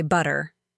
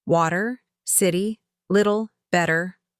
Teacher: Another sound that always confused me was the flap t in American English. Many t sounds become soft almost like a d like in the word butter. I used to say it with a hard tur but Americans say butter.